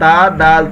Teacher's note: جو تا کا مخرج ہے وہی دال کا مخرج ہے کہ زبان کی نوک اور اوپر کے دانتوں کی جڑ سے ادا ہوتے ہیں۔